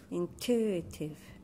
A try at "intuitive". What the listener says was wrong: In, you're saying into. Intuitive.